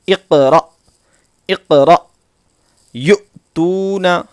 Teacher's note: حمزہ ساکنہ کے پڑھنے میں جھٹکا ہوتا ہے، اور وہ اس طرح اقرا، اقرا یؤتون، ٹھیک ہے جی.